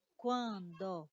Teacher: nós temos uma vogal seguida de um n que vai dar esse som nasalizado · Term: dígrafo vocálico